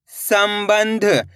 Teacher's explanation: इस शब्द के अंदर आधा मा का उच्चारण भी निकला है और आधा न का भी निकला है इस बिंदी का तो आधा मा के रूप में निकलेगा इसका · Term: अनुस्वार की मात्रा